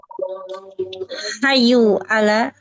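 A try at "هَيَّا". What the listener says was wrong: hayya, bukan hayyu, hayya.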